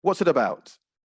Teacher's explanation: i didn't pause at all there wasn't a single pause i linked all of those words together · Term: consonant vowel linking